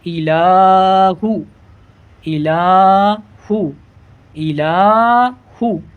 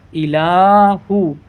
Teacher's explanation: ہا پیش ہو الہو الہو الہو. ہا کو نہیں بڑھانا ہے، صرف لام کو کھینچنا ہے